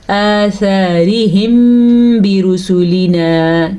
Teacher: میں نے یہاں پہ ہونٹ بند کیے ہیں کیونکہ یہاں پہ اخفاء شفوی کا قاعدہ ہو رہا ہے، اس قاعدے کی روح سے یہاں پہ غنہ ہوگا اور ہونٹ بند ہو جائیں گے۔